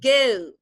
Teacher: Dia itu kan kalau di Amerika itu dia dibacanya itu go biasa, o-nya dibaca biasa. Tetapi ketika dia British, maka dia itu o-nya itu diganti eu. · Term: diftong